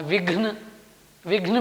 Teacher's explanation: विघ्न में भी देखिए व के बाद महाप्राण घ का उच्चारण होता है